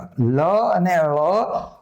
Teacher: એ જ રીતે દંત્યમાં આ લ તે અર્ધ અલ્પ પ્રાણ છે, અને એ પાર્શ્વિક છે. પાર્શ્વિક લ અને ળ બે પાર્શ્વિક વ્યંજન છે